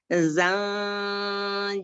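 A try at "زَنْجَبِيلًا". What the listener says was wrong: Jangan ambil ancang-ancang di awal huruf. Jangan ambil ancang-ancang. Jangan langsung aja. Jadi huruf, makharijul huruf, sifatul huruf itu keluarnya berbarengan. Zanjabila.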